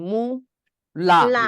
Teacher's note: মু যখন উচ্চারণ করেন মুখটা সংকুচিত হয়ে যাচ্ছে আর লা উচ্চারণ করলে মুখটা খুলে যাচ্ছে একবার সংকুচিত একবার খুলে যাওয়া এটা একটা কঠিন